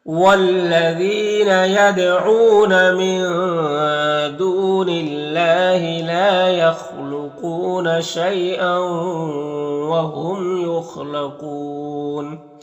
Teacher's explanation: یا ساکن سے پہلے شین کے اوپر زبر ہے تو یالین ہوگا، یالین کو نرم آواز کے ساتھ جلد پڑھیں گے · خا حروف مستعلیہ میں سے ہے اور قاف بھی حروف مستعلیہ میں سے پر پڑھیں گے. اور یہاں پر وقف کی صورت میں مد عارض وقفی ہوگا